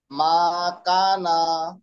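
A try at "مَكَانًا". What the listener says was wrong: কাতে টান হবে, মাকানা।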